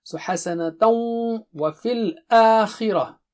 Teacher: So there is idgham merger with ghunna. So ghunna means double stretch.